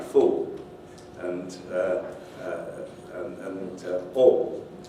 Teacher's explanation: With many younger speakers today, in fact, the dark L is replaced by an oo-like sound.